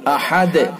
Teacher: احد، دال کے اندر قلقلہ کریں گے وقف کی صورت میں۔